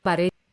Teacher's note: So baroye becomes bare, for at least this speaker in casual speech.